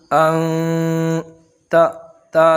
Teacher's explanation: تا، تا زبر تا، تا کے اوپر زبر کی حرکت ہے، حرکت کو جلدی پڑھیں، تھوڑا بھی نہ کھینچے، زبر کی آواز اوپر کو جاتی ہے۔